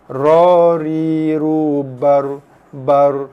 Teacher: Dia lidah kita bergetar dalam 2 ke 3 kali getaran sahaja. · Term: sifat takrir